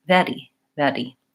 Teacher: So you might investigate in your native language if the R sound is made in the front and doesn't roll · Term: flap